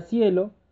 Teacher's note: es un diptongo porque está conformado por vocal débil más una vocal abierta en una sola emisión de voz o en una sola sílaba